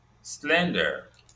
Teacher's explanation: Slender is stressed on the first syllable.